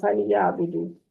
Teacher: لام ساکن پہ کلکلا نہیں کرنا